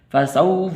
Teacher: واو حروف لین میں سے لمبا نہیں کرنا ، اس فا کو لمبا نہیں کرنا، فسوف ایسے نہیں، ٹھیک